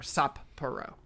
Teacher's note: there's a pause between the two p sounds essentially to pronounce both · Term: double consonant